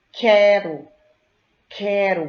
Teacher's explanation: Vocês ouvem o som do U? Não, vocês apenas ouvem o som do K.